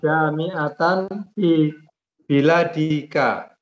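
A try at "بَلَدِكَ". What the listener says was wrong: Laisa bilad, balad. Laisa bilad, balad.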